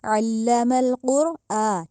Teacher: الف کے اوپر کھڑی زبر ہے تو اس لیے اس کو لمبا کیا ہے